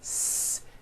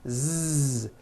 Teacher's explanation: So S has no voicing. S. Z has voicing. Z. So we say the S sound and the Z sound are also paired consonants.